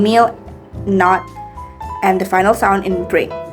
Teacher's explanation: Examples of nasal stops are the first sound in meal, not, and the final sound in bring.